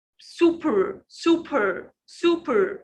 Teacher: Be careful about P here. You push your air from your mouth.